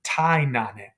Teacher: So the NE is the enclitic asking a question. The ne elides into the anime. So we get rid of the E. You have tai nane. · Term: elision